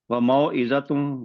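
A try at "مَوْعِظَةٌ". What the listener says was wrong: موعظۃ، شاید زوئے کو تھوڑا سا لمبا کر دیا گیا ہے. تو موعظۃ.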